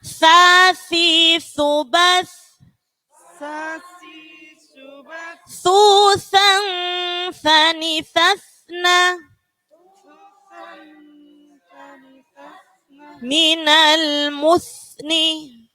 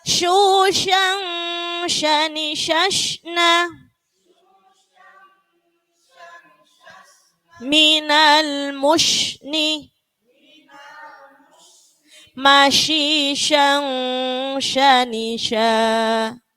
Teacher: Jadi kalau sa tidak ada hembusan, ada tipis. Tapi kalau sya, ya, seperti jenengan itu ngeluarkan angin